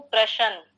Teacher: बीच में जो शकार है उसका उच्चारण लंबा और जो नकार है उसका उच्चारण छोटा, जबकि होना विपरीत चाहिए।